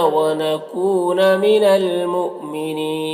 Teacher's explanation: یہاں پر حمزہ ساکنہ جھٹکا لگے گا اور وقف کی صورت میں مد عارض وقفی ہوگا, تو اس طرح سے پڑھیں گے.